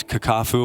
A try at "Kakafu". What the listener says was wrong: Kakafu. But you put some emphasis on that second syllable. You said Kakafu.